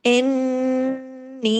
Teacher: نون پہ تشدید ہے، نون پہ غنہ کرنا ہے ، اور پھر نی، 2 حرکات کھینچنا ہے، اس لیے کہ